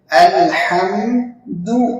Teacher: اب دال کو بہت سے لوگ کیا کرتے ہیں، موٹا پڑھتے ہیں، الحمد۔ تو دال باریک ہے تو اس کو باریک پڑھنا چاہیے